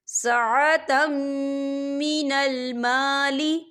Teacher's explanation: ادغام ہوگا اور ہم اسے غنے کے ساتھ پڑھیں گے